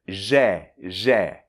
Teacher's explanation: comme JE, mais avec un E ouvert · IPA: [ʒɛ]